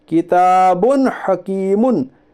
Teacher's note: یعنی دو پیش کی تنوین کو ظاہر کر کے بلا گنا کے جلد پڑھیے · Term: اظہار حلقی